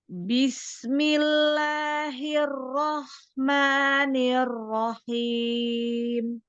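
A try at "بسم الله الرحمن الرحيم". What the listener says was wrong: Nah, takrir di sini, dia di sini terlalu banget ya. Nah, sedikit dikurangi, bikin dia seperti ada ini ya, di dalam belakang dekat tenggorokan, Bismillahir hirro hirrohmanirrohim.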